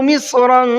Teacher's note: مصرا کے صاد کو منہ بھر کے پڑھنا ہے